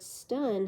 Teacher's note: the T in the word stun however does not have the following puff of air that is it is not aspirated